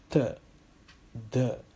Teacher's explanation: dental, where tip of your tongue is touching the upper teeth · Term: dental sounds